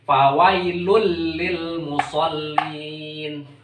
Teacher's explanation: ini bacaan idgham bila gunnah. Memasukkan dengan tanpa dengung.